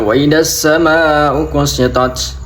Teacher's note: Itu ada mad tabi'i akan tetapi bertemu dengan tasjid dibaca mad lazim musaqqal hilmi dengan panjang 6 harokat